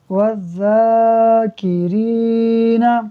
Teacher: واو ذال زبر وذ، ذال کھڑا زبر ذا، وذا، کاف زیر کی، وذاکی، را یا زیر ری، والذاکری، نون زبر نا، والذاکرین۔ یہاں پر واو ڈائریکٹ ذال سے ملے گا، الف اور لام پڑھنے میں نہیں آئے گا، اور یہاں پر را کو اس وجہ سے کھینچا ہے کیونکہ یہاں پر یا مدہ ہو رہا ہے، والذاکرین۔